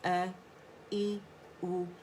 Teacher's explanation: حمزہ فتحہ ا، حمزہ کسرہ ای، حمزہ دمہ او، ا ای او. اور یہ اقص الحلق for throat سے ہماری آواز نکلے گی